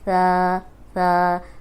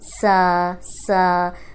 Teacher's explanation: اب دیکھیں اس میں ذرا بھی سیٹی کی آواز نہیں ہے